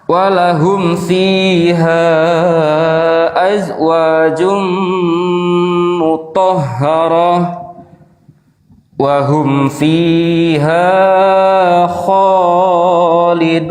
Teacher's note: Kalau mau disambung itu didengungkan. tanwin bertemu dengan waw tasdid.